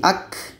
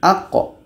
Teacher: Kalau ka dia berangin. Ak. Tapi ini qa. Tidak ada anginnya. Aqqa. Bahkan hukumnya qalqalah.